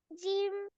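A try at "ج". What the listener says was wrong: আর একটু টেনে বলতে হবে।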